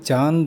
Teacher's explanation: ನಮ್ಮ ಬಾಯಿ ಮತ್ತು ಮೂಗು ಎರಡರ ಮೂಲಕನು ಧ್ವನಿ ಹೊರಗೆ ಬರುತ್ತೆ · ಮೂಗು ಮತ್ತು ಬಾಯಿ ಎರಡರಿಂದಲೂ ನಾವು ಧ್ವನಿಯನ್ನ ಹೊರಡಿಸ್ತೀವಿ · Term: ಅನುನಾಸಿಕ